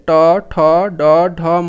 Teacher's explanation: ট বর্গের সব বর্ণগুলো মূর্ধা থেকে উচ্চারণ হয়